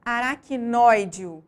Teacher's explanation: A sílaba mais forte é a antepenúltima, por isso essa palavra é considerada proparoxítona